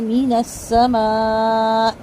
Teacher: من السماء میں خیال رکھیں گے کہ سین کی سیٹی بالکل باریک ہو، اور میم کے اوپر جو مد ہے وہ مد واجب ہے. مد واجب کو 4 حرکت لمبا کریں گے، حمزہ کا زیر معروف ادا کریں گے